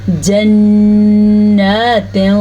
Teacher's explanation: یہ ہم نے غنہ بھی ادا کیا اور کھڑی زبر بھی